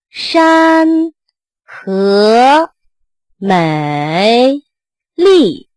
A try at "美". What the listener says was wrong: 美 字 有 点 拖 ， 美 美 ， 不 是 美 ， 还 横 着 转 一 段 ， 这 不 对 ， 美 ， 这 不 对 ， 美 。